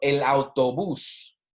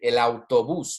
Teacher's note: the emphasis is on the last syllable. Okay, el autobús, because we have an accent there.